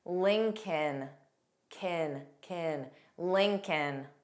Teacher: So of course, the first L is pronounced. The second L is silent.